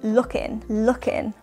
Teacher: We wouldn't really pronounce the final G or G sound. You can, of course, pronounce the final G sound, but it's important to note that most native speakers won't.